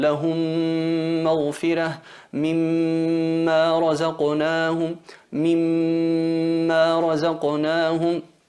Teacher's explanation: ¿Por qué es labial? Porque la M se articula en los labios y esa fusión se produce en la parte de los labios aplicando la nasalización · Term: fusión labial